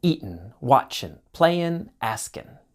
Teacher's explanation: Often times in spoken English the g sound disappears.